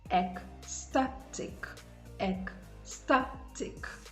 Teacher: the stress is on the syllable before the last syllable